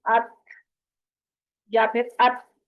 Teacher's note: अत जब करते हैं तो ता की आवाज बिल्कुल फील नहीं होती है, तो इसलिए थ की आवाज के साथ पढ़ा जाता है